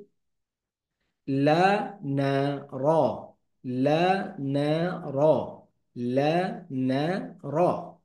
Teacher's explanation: লা জিহবার আগা অগ্রতালুর সাথে লাগিয়ে উচ্চারিত হয়